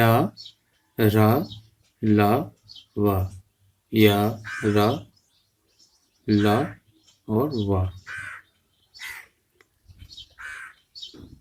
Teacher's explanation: अंतस्थ व्यंजनों का उच्चारण करते समय हमारी जीभ हमारे मुख के हिस्से को बहुत ही कम स्पर्श करती है। स्पर्श तो करती है लेकिन थोड़ा सा, बिल्कुल।